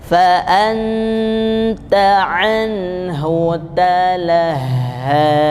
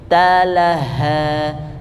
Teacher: huruf ha tebal tidak bersifat asyiddah. Jadi ketika dia tasydid hembuskan juga.